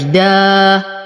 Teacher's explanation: أفتح فمي فتحة كافية، لساني مستفل لأن الألف مرققة، والصوت يخرج للخارج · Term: الفتح